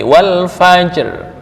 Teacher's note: Wal fajri rnya tipis. Wal fajr berarti harus tetap kedengaran sedikit.